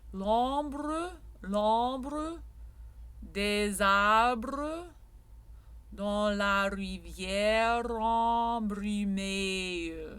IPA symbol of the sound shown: ə